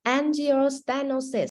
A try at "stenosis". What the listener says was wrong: Yeah, don't forget the E. It's stenosis. Okay, So you see that EH, okay, not air. You don't pronounce air. So STE. Stenosis.